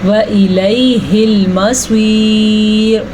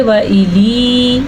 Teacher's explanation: اچھا جی، پھر سے یہاں پہ یا لین ہے. یا سے پہلے زبر ہو تو وہ یا لین ہوتی ہے، اس کو لمبا نہیں کر سکتے. اگر کوئی پڑھے وَإِلِي تو وہ غلط پڑھے گا، یا کوئی پڑھے وَإِلَيْهِ الْمَصِيرُ تو بھی غلط پڑھے گا کیونکہ لین میں لفظ کو لمبا نہیں کیا جاتا.